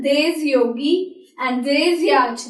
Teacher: So, before a letter Y, there is no liaison. There is no link.